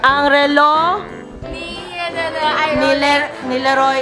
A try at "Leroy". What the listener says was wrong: Leroy. Not, you said Reloy.